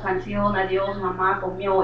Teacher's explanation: con acento prosódico en la última sílaba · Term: palabras agudas